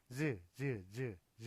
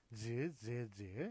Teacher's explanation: 그다음에 이제 그 경구개 같은 경우는 즈 하면은 혀가 그 좀 그 경구개 쪽하고 예 좀 많이 가까워지면서 마찰을 일으켜요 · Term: 경구개음